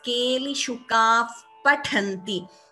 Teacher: So visarga followed by pa, upadhmaniya. We do not chant the visarga completely. We chant it as keli shukaf pathanti.